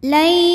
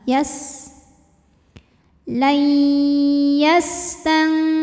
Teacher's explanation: cara bacanya nunnya dimasukkan ke ya disertai bunyi dengung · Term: idgham bhunah